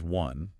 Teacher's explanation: It starts with an O, which we typically think of as a vowel, right? But the sound is one, like a W consonant sound.